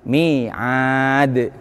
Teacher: Bisa dibaca mantul dalnya dan harus mantul dalnya apabila berhenti atau wakof. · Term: qalqalah kubro